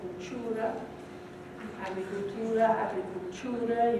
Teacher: You hear a ch sound creeping in because they're applying English assimilation practices to it.